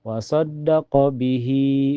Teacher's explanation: Di sini, Shad ditekan ke dalam Dal karena Dal memiliki shaddah.